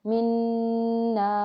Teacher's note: और वक्फ़ में रॉ को मोटा पढ़ेंगे क्योंकि दो ज़ेर हालत वक्फ़ में ख़त्म हो जाती हैं, साकिन हो जाती हैं, तो साकिन रॉ से पहले अगर ज़बर हो तो उसे मोटा पढ़ते हैं। और यहाँ पे अलिफ मद्दा है, नून अलिफ ज़बर ना, अलिफ मद्दा के बाद जब हालत वक्फ़ में रॉ साकिन होगा तो मद्दे आरिज़ वक्फ़ी बनेगी, जिसको हम 6 रकात खींच के पढ़ेंगे, मिन नार, रॉ को मोटा भी पढ़ा और मद को भी अदा किया।